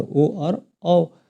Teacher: कंठ और ओष को मिलाकर ओ और औ वर्णों का उच्चारण होता है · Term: कंठ ओष